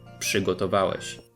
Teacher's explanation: the preceding p causes RZ to be pronounced as sz, przygotowałeś.